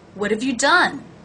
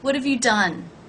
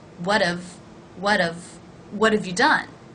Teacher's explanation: Notice that the H is dropped in have, and the vowel is actually reduced from a to the schwa of. That is how we're pronouncing the word have in the sentence.